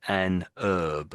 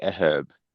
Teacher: we always say the H in this case